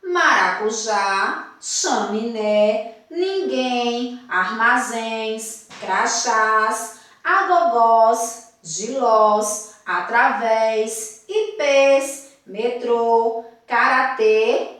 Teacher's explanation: essas são as palavras que são acentuadas na última sílaba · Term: oxítonas